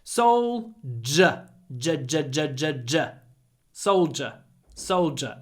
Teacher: It's a j sound. I know it's a d, but we say j. Soldier. And try to get dark l as well.